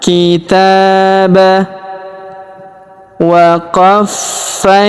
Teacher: huruf fa kita tahan dan kita tekan karena terdapat tanda tasdid di atasnya. Waqofaina huruf kita ayun sekali karena terdapat ya sukun di depannya.